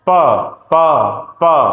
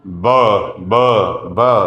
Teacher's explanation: आप देखेंगे कि आपके वोकल कॉर्ड्स हिल रहे हैं बहुत मूवमेंट हो रही है जब आप ब बोल रहे हैं। दोनों ही बाइलेबल हैं, दोनों में ही होंठ यूज हो रहे हैं, जैसे उनको खोला जा रहा है आवाज आ रही है।